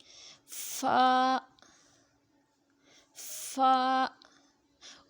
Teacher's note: اوپر کے اگلے دونوں دانتوں کی نوک جب نیچے کے ہونٹ کے اندر والے حصے سے لگے تو فا ادا ہوتا ہے.